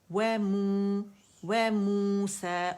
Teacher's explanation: و موسیٰ و مدہ طبیع حرکتین ہے، یعنی اسے ہم کیا کریں گے؟ مد اصلی بن رہا ہے، 2 کاؤنٹ کی آواز گول ہو جائے گی